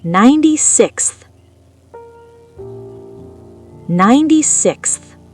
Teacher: This is a crazy combo of 3 consonants. K, S, Th, Kst. It's like 3 explosions in a row.